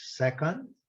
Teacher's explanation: o E é bem forte da primeira sílaba, e o O, second, é aquele símbolozinho que é o nosso schwa, aquele Ezinho contrário. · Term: sílaba mais forte